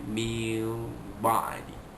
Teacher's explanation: Satu dekat nun mati itu ada tanda mim situ, mim kecil itu, mil ba'di. Mula-mula macam nun mati, dia jadi bunyi mim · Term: iqlab